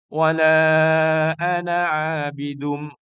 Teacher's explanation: Ana di sini meskipun tulisannya ada alif, sepertinya dibaca panjang, tapi cara membacanya pendek. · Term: dibaca pendek